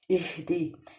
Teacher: یا مدہ کا قاعدہ یہاں پہ ادا ہو رہا ہے اہدی یہ جو ہا ہے یہ حلق کے نچلے حصے سے ادا ہوتا ہے سینے کی طرف سے اور اس کو ادا کرتے ہوئے سانس باہر نکلتے ہوئے محسوس